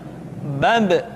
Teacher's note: Ketika mati, maka terdengar suara pantulan